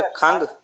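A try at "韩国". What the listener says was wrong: खंग नहीं, हन, हन एच हे आएगा, हे, खंग नहीं, हांगुआ एच हे, ये नून हन, हे के ऊपर जबर आएगी हन, या हे नून कर लें हन, हन, हांगुआ, खंग नहीं। हांगुआ, हांगुआ मीन कोरिया।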